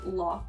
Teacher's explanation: slip into a stronger japanese accent and say like lock instead of rock